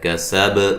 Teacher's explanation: با کو ہلا کے پڑھنا ہے، قلقلہ ہے